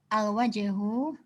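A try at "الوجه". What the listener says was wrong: Jayid. Al-wajhu. As-sadiqu. Al-Qur'anu. Baik. Ahsan.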